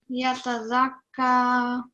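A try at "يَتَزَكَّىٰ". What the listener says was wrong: Okay, so what you were doing before is you just turned this into a sukoon. So you said zak. So that's wrong. What happens is that there's no change and you would produce the sound as it were normally. Okay, yatazakka.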